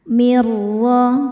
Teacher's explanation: Kemudian ada hukum idgham bila ghunah karena nun sukun bertemu huruf ro. Cara bacanya nun ini dimasukkan ke ro tanpa ditahan, tanpa didengungkan. Mirho ro dibaca tafkhim karena berharakat fathah maka rnya tebal. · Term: idgham bila gunnah